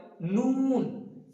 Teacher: এই জিমের আগাটা উপরের যে সামনে দুটো দাঁত আছে সেই দাঁতের গোড়ার সঙ্গে লাগে এবং ঠুটটা হালকা গোল হবে